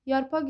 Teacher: Sözün sonu q hərfi ilə yazılır. Söz müstəqil işlənir. Bu zaman x kimi tələffüz olunur.